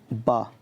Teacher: हिंदी की बा ध्वनि, तो ये भैया ओष्ठ है, ओष्ठ ध्वनि है।